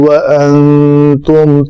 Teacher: نون ساکن کے بعد تا ہے، اخفا ہوگا